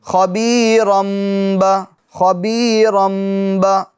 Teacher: اب جب پیچھے سے ملائیں گے تب وہ تنوین کی آواز میم ساکن میں بدل جائے گی. نون ساکن کی آواز, تنوین کے نون ساکن کی آواز میم میں بدل جائیں گی. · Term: اقلاب